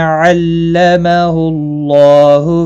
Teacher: کما ما الف مدہ ہے، 1 الف کے برابر کھینچ کر پڑھیں گے۔ علمہ اللہ اللہ کا لام اس پیش کی وجہ سے پور پڑھا جائے گا